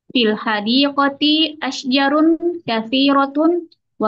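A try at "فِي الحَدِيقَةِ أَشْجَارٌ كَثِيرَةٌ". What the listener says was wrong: Panjang. Asja. Panjang. Asja.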